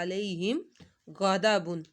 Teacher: میم ساکن کے بعد غائن آ گیا تھا ہم نے گنہ نہیں کیا